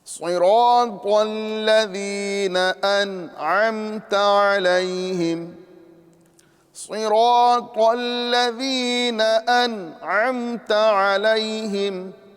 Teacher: یا مدہ ہو رہی ہے، ایک الف کے برابر کھینچ کے پڑھیں گے اور ذال کو نرمی کے ساتھ ادا کریں گے.